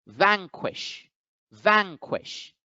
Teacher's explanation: So the first syllable, van, gets accented, vanquish, vanquish.